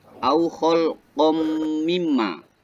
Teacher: Au khalqam mimma itu termasuk dalam ilmu tajwid hukumnya nun sukun atau tanwin, yakni huruf qaf ya yang berharokat fathah tanwin ya bertemu dengan huruf mim masuk dalam hukum bacaan idgham bi ghunah, yakni dengan cara bacanya itu memasukkan suara nun sukun atau tanwin ke dalam huruf mim ya disertai dengung